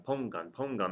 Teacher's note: the stress is over the O